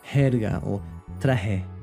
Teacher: in Central America and the Caribbean, it can be a lot softer and much more similar to the English H sound, like jerga or traje, almost like you're just breathing through the letter.